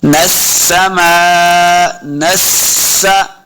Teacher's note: सीन भी मुशद्दद है, तो सीन पे सीटी की आवाज भी आएगी। ज़य्यन नस्सा, नस्सा, माअद, मा, देखिए मीम के ऊपर मद है, तो हमने इसको लंबा करना है।